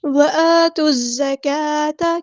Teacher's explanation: یہاں پر لام شمسیہ ہے اس کو ظاہر نہیں کریں گے، زا کو سختی سے ادا کریں گے، سٹی بھی آئے گی ، وآتوا الزکاۃ، کاف باریک ادا کریں گے، لائٹ لیٹر ہے،